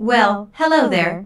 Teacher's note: notice the emphasis on hello which shows that did not expect to see Julia